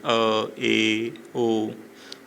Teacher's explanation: अर्ध विवृत स्वर में इसमें मुख आधा ही खुलता है